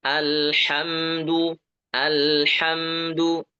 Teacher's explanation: Lamnya alirkan dikit, mimnya juga ya, mim sukun alirkan sedikit.